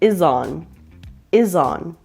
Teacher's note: the S in is has a Z sound, which connects with the O in on, so it sounds like is on, is on.